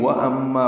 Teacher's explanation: میم مشدد پہ غنہ اور مع الف مدہ ہے